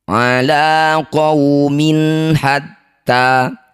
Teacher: Ala qaumin hatta, kasroh tanwin bertemu ha disebut bacaan idhar halqi. Baca jelas min, tidak usah dengung.